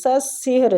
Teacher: را پور پڑھیں گے فتح کی وجہ سے.